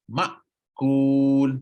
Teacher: dia akan tertutup rapat rapat Dia tutup macam niah ha nampak huruf hamzah yang sakinah mati berhasil dengan merapatkan kedua-dua pita suara